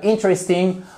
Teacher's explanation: Pourquoi? Parce que comme on accentue sur la première syllabe, on a notre accent tonique sur la première syllabe. Du coup, le E ici, il est compressé totalement. Et hop, c'est un peu comme s'il s'était échappé.